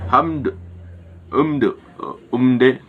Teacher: Terus selanjutnya pada lafaz hamd, umde terdapat izhar safawi karena huruf min sukun bertemu dengan huruf dal dengan cara membacanya dengan jelas dan tidak dengung